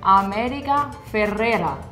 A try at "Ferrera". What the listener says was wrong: You have to roll the R's. Ferrera.